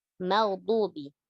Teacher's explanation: Ghainnya yang tebal, yang tipis itu mimnya. · Jangan merubahnya. Jangan merubah makhrajnya dot ya, sehingga menjadi huruf dal yang ditebalkan.